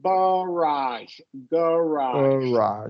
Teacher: is when we're talking about these FR Lo French loan words the first syllable will usually be unstressed